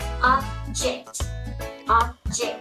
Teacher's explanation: khi mà từ object này là động từ thì chúng ta sẽ Nhấn vào cái âm tiết thứ hai